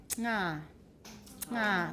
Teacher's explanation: We had a velar nasal ng